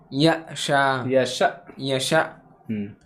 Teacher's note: جھٹکا ہوگا حمزہ ساکنہ پہ جھٹکا